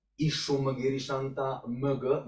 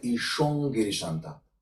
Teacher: To make it more smoothly, we are changing this Anuswara into the nasal velar pair and just preparing our vocal apparatus to utter the velar which is actually following